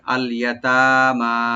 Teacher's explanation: ইয়া open রাখবেন, তা open থেকে একালিফ টানবেন, মিম এখানে ওপেন রেখে একালিফ টানতে হবে।